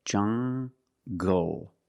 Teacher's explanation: Make the hard g sound, jungle. So you have the nasal sound and the hard g, jungle